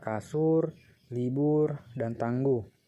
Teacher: terbuka seperti pada kata susu ibu dan tunggu yang kedua yaitu direalisasikan sebagai bunyi u tinggi bawah belakang bundar · direalisasikan sebagai bunyi U tinggi bawah belakang bundar apabila berada pada silabel tertutup